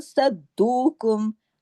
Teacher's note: अब इसमें स्वाद मोटा पढ़ा जाएगा, और दाल पे सख्ती से जुड़ेगा, और फिर दाल की आवाज 2 दफा दाल आना चाहिए, लेकिन बारीकी से।